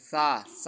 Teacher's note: سا کو نرم پڑھنا ہے، بالکل جو زبان کی نوک ہے وہ آگے والے دو دانتوں کے ساتھ ٹکرا کر ادا کرنی ہے